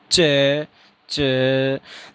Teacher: हवा complete closure होगी, फिर उसके बाद में स्लो रिलीज होगी